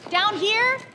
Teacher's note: Her voice rises at the end of down here, and that upward inflection is what turns a simple statement into a polite question.